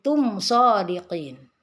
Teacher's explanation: mim sukun bertemu dengan shad tidak boleh dengung karena ini adalah izhar syafawi. Izhar artinya bacaan dibaca jelas, syafawi itu bertemunya dua bibir, jadi bibir.